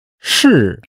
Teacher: To be. It's fourth tone.